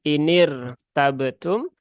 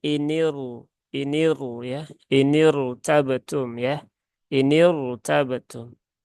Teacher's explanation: karena ini kasrohnya kasroh arid, maka roknya dibaca menjadi tebal